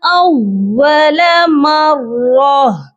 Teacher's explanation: را موٹا بھی کر کے پڑھا جائے گا، اور اینڈ پر دیکھ لیجئے تا دو زیر تین، مراتن ہے، اور جب بھی آپ دیکھیں کہ لاسٹ والا جو لیٹر ہے وہ گول والی تا ہے یا ہا ہے تو ہم ہا کو ساکن کرتے ہیں، یہاں پر بھی ہم نے ہا کی آواز پر آ کر رکنا ہے، مرت نہیں ہوگا۔